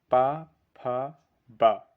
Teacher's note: जो पा वर्ग है वह ओष्ठ से बोला जाता है।